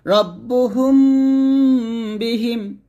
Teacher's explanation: তারপর আসেন মিম সাকিনের পর বা, মিম সাকিনের পরে বা আসলে গুণনা করবেন, যেমন রব্বুহুম বিহিম, রব্বুহুম গুণনা করবেন, রব্বুহুম বিহিম দুই ঠোঁট মিল করে গুণনা করবেন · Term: মিম সাকিনের গুণনা